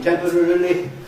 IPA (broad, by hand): ˋtempərərəli